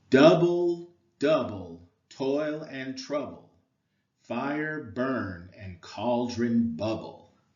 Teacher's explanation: one stressed syllable followed by an unstressed syllable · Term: Troy